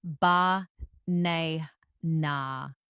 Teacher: in the word banana, the stress is on the second syllable.